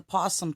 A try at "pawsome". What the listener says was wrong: I would like you to restate the word possum because it sounded like you said possum.